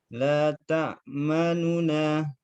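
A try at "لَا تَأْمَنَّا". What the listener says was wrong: Nah, ini nu-nya dibaca tidak sempurna harokatnya. Kalau nu, ini sempurna. Dibacanya lebih cepat. La ta'manuna. La ta'manuna. Yang ismam. Bibirnya harus dilihatkan bibir. Baca sukun dulu. La ta'man. Nah, sukun. La ta'man. Jangan langsung dimonyongkan bibir.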